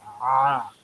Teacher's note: आइन जो है वस्ते हलक से अदा होता है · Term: आइन की आवाज़